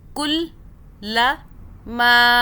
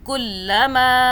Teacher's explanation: کل لام کی 2 مرتبہ آواز بنا رہے ہیں، اوپر تشدید ہے اس لیے